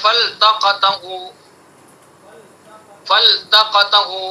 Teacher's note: لام کا ادغام تا میں نہیں ہوتا